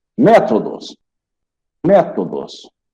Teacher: ela tem a antepenúltima sílaba mais forte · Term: proparoxítona